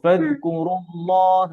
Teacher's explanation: আর এই রুটা রতে পেশ হচ্ছে র মোটা, র দম্মা র হেবি